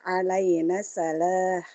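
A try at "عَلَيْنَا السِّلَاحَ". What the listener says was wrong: Alaina silaha. bacanya bukan sa. Alaina silaha.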